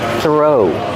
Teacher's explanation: The TH makes a voiceless sound, just air. Throw. Link the sound to the R.